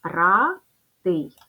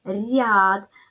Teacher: Ми чуємо що перший звук р у нас пом'якшився тобто буква я пом'якшила попередній звук р робимо висновок буква я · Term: пом'якшення попереднього приголосного